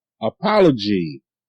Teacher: You see the A making the schwa sound.